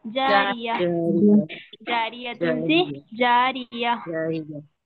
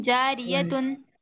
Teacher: गोल ता पर वक्फ करना हो तो वो हाय साकिना बन जाती है